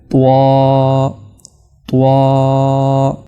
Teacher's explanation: اگلا حرف ہے طوا، طوا۔ یہ جو طوا کی آواز ہے یہ زبان کے اگلے کنارے کو جب آپ اوپر کے دانتوں کی جڑوں سے لگائیں گے تب جا کر پیدا ہوتی ہے۔ تا کی آواز پتلی ہے، باریک ہے، اور طوا کی آواز موٹی ہے۔